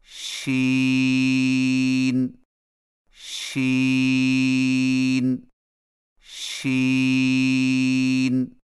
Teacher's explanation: زبان کے درمیان کو تالو کی طرف بلند کرتے ہوئے باریک اور پھیلتی ہوئی آواز میں پڑھیں